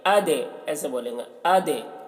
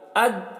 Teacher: دال میں قلقلہ کریں گے، دال کی آواز ٹکرائے گی